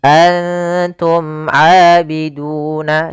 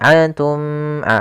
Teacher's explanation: Dan di sini bertemu dengan huruf ain yang mana termasuk huruf izhar syafawi, maka dibaca dengan jelas suara mimnya. Antum abiduna tidak boleh ditahan antum a enggak karena dia izhar harus jelas.